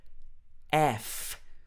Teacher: So we've got this F sound where your upper teeth are touching your bottom lip.